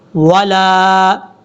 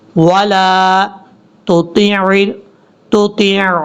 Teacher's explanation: لام کے آگے الف ہونے کی وجہ سے اس کو لمبا کریں گے